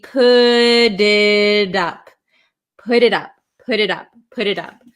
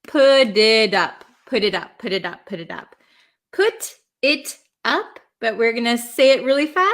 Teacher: between two vowels a lot of the times in American English it's going to turn into a flap t which sounds like a d